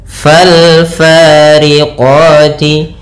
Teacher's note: Di sini ada alif lam lagi, yaitu alif lam qamariah, yaitu alif dan lamnya ditulis dan dibaca dengan jelas suara lamnya. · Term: alif lam qamariyah